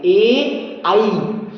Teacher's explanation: कंठ तालब्ध, ये कंठ और तालु की सहायता से बोले जाते हैं।